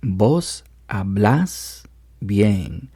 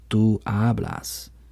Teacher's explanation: But notice here, there's more emphasis on that last A, so it comes out sounding different